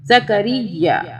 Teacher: اب یہاں پہ بھی یا کی 2 مرتبہ آواز ہے اس تشدید کی وجہ سے